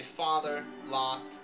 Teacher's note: in American English you say father lot same vowel